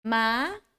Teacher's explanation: First tone is when you open your mouth, naturally you make the sound ah, ma. Second tone, you go up.